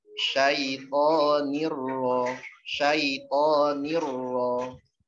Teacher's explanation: Syaitoni ya. Kemudian nun sukun ketemu ra ya. Dia melebur masuk idgham. Cuman nggak pakai gunnah ya tidak berdengung